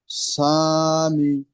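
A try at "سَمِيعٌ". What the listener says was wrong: এই সাটা, এটা হারাকাতের পড়া, টান হবে না। মিম ইয়াজের মি, এটা হচ্ছে ইয়ামাদার পড়া, এটা টান দিয়ে পড়তে হবে। তাহলে সামি।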